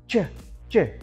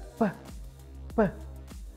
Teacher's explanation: unvoiced atau bisa disebut voiceless, yaitu kata yang bisa kita dengarkan itu dari pergerakan bibir kita dan tidak ada vibrasi atau getaran dalam tenggorokan kita